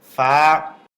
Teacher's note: উপরের দাঁত আঘাত নিচের ঠোঁটের পেটে লাগবে।